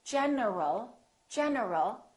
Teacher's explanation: my tongue is moving for the N and it's moving for the L so when I say in general my tongue moved three times